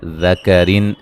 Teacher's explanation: را کو باریک پڑھیں گے، را کے نیچے زیریں ہیں اس وجہ سے